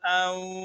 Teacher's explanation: یہ واو ساکن ہے، اس سے پہلے زبر ہے تو یہ واوی لین ہے، اس کو ہم نرمی کے ساتھ پڑھیں گے